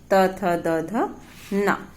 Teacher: अब आइए दंत वर्णों का उच्चारण होता है, इन्हें दंत वर्ण। जिह्वा दांतों से स्पर्श करती है तब ये दंत वर्ण कहलाते हैं।